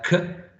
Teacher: k, which is voiceless, velar, and plosive consonant sound.